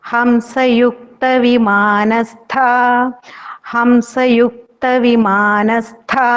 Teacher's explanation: Here stha ta is mahaprana.